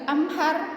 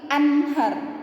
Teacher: nun mati ketemu sama ha. Ya, maka bacanya jelas. Ya, nunnya itu jelas. An, min. Ya, bukan anhar, bukan juga anghar, bukan juga amhar, tapi anhar. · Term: izhar